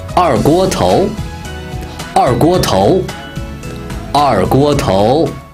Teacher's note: 二 fourth tone. 锅 first tone. 头 second tone.